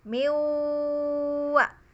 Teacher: disebut nakis atau kurang karena dengung pada huruf nun masih kita baca. Miwa, itu kan ada dengungnya kita bacanya. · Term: gunnah